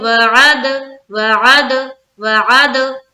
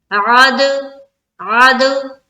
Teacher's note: دال میں لگ کر آواز واپس لوٹ رہی ہے، اسے کہتے ہیں قلقلہ کرنا